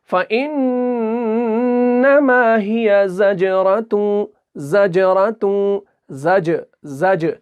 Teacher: تو جیم کو جو ہے ہلکا سا جھٹکا دے کر ہم ادا کریں گے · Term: قلقلہ